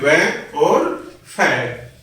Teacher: जिन व्यंजनों के उच्चारण में ऊपर के दांत नीचे वाले ओष्ठ को स्पर्श करते हैं वे दंतोष्ठ व्यंजन कहलाते हैं।